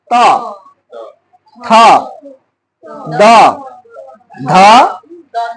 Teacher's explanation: দন্ত শব্দের অর্থ হচ্ছে দাঁত। জিহ্বার পাতলা অংশটা সামনের দুটা দাঁতকে স্পর্শ করে যে সকল ধ্বনি উচ্চারণ করে ওই ধ্বনিগুলো দন্তধ্বনি। যদি দাঁতকে স্পর্শ না করে ওগুলা সঠিক উচ্চারণ হবে না, মানে দন্তধ্বনি হবে না, স্পর্শ করতেই হবে।